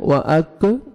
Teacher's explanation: नहीं करना ना ही आपने काफ को मोटा करके पढ़ना है ये काफ बारीक पढ़ेंगे और लाइट से साउंड आएगा